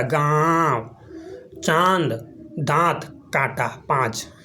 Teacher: अनुनासिक जिसमें नाक से कम मुख से ज़्यादा वायु निकलती है उच्चारण में। नाक से कम और मुख से ज़्यादा, गाँव, चांद, दांत, कांटा, 5, ये सब देखिए।